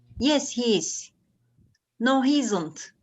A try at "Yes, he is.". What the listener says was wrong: Okay, yes, he is. You make it a little bit, you separate it a little bit because it sounds like, yes, he's, it sounds like HIS. Okay, yes, he is.